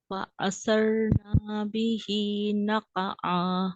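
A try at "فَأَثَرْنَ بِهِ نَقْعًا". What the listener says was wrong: नून को लंबा नहीं करना, नून को लंबा नहीं करना, अलिफ डाल रहे हैं आप। فأثرنا به نقعا आप अपने नून के आगे अलिफ लगा रही हैं बहन।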